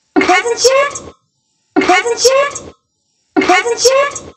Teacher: I'm hearing presents yet, linking with a little bit of an SH or maybe even a CH sound, which is written with the T and then the SH sound, which makes sense because we got a T here. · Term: sound change